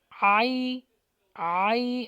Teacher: عین کا مخرج لگے گا اور یہ حرف لین ہے